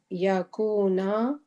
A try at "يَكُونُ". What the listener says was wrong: نون حرکات کو صحیح سے پڑھیے گا. نون کے اوپر کیا ہے؟